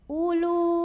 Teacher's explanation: Jadi waw ini bukan mad, bukan pemanjang, u-nya tidak perlu dibaca panjang. U pendek. Ulu Nah, ini yang lu, apabila kita berhenti di sini, ini hukumnya mad tabi'i.